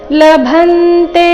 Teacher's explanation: ಲಭಂತೆ ಭ ಮೇಲೆ ಆಘಾತ